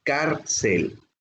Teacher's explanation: cárcel su sílaba tónica es la penúltima